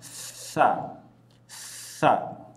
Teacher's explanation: ujung lidah bertemu dengan ujung gigi seri atas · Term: huruf ta